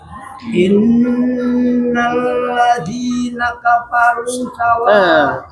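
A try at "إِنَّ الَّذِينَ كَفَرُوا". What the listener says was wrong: Afwan. Di sini bukan naka paru, tapi fa. Coba fa. Fa. Naka faru.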